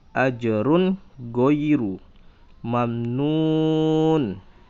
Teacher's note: Run tanwin, ya, ketemu dengan go adalah hukumnya izhar. Jadi tidak dengung tetapi jelas tanwinnya.